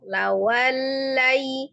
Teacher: lam tasdidnya tidak terlalu ditahan, tidak terlalu ditepas. Jadi bukan lawalla atau terlepas lawalla.